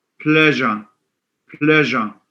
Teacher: It's a ja sound, which is voiced palatal alveolar fricative.